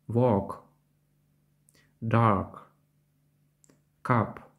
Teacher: Схоже на український приголосний «к», однак англійський «к» вимовляється з придихом і в кінці слів звучить чітко. «Walk», «dark», «cup». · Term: звук к